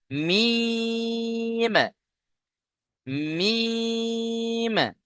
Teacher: মিম দুই ঠোঁটের শুকনো অংশ থেকে উচ্চারণ হয়।